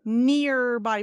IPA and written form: ˈnɪrˈbaɪ (nearby)